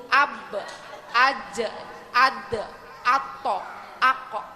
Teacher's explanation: Jadi qalqalah ini bacaannya kalau kata dipantulkan, memantul ya Bu ya.